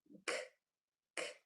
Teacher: The hard sound for C is sounds hard. k k The back of the tongue kicks off against the back of the throat.